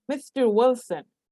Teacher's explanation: we have to notice the rising intonation on mr wilson